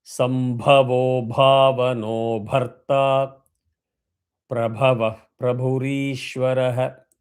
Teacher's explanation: The re dirgham has to be stressed.